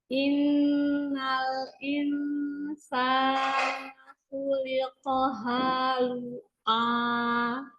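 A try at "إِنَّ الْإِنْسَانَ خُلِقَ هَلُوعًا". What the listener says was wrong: Kayaknya nggak panjang, Masya Allah. Halu'a.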